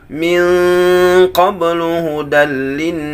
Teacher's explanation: Ini nun yang bertasydid masuk kepada tingkatan gunnah yang pertama. Maka membaca nun yang bertasydid harus lebih sempurna, lebih lama daripada nun sukun bertemu dengan qaf.